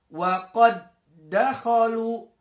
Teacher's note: Pertemuan dal dengan da berikutnya. Maka dal di situ tidak perlu dibaca qalqalah. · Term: idgham mutamatsilain